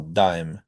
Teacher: when you say a d you go straight into the vowel dime. And uh if you know the way the T is pronounced in Spanish, French, and a lot of other languages, it's actually sort of like that.